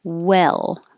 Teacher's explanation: the tongue is lower so it doesn't have to go high and low it's more in the middle the whole time